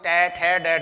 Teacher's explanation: ट, जीभ ऊपर जा रही है, ऊपर वाली छत से टकरा रही है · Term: मूर्धन्य